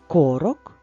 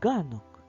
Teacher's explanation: звук к на початку слова глухий А звук Ґ на початку слова дзвінкий